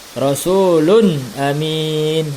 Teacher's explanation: karena tanwinnya bertemu dengan huruf hamzah maka Lun tanwin di sini dibaca jelas tidak berdengung · maka lun tanwin di sini dibaca jelas, tidak berdengung. Rasulun amin, ya, tidak didengungkan menjadi Rasulun amin, tidak. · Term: izhar, hukum izhar